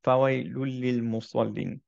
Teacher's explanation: দম্মাতাইনের যে নুন সাকিনাটা, সেটা অ্যাকচুয়ালি পরের লামের সাথে মার্জ হয়ে গেল